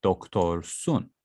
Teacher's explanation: When it comes to doctor, I have o at the end. So that's why it continues with doktor sun, because it's a round vowel.